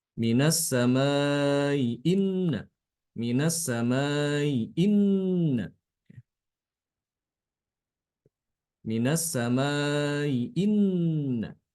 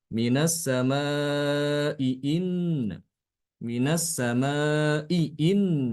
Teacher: Hamzah bertemu ya keduanya dalam kata yang berbeda maka di sini Imam albazi adalah dengan membaca Hamzah pertama itu dengan Tasil